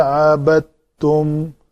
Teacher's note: دال اور تا دال تو یہ حروف نطعیہ ہیں تو اس کا دال کا تا کے اندر ادغام ہوگا